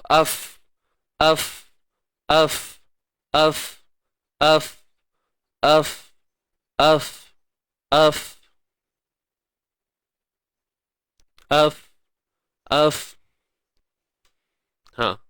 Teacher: Bibir bawah bertemu gigi atas. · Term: huruf fa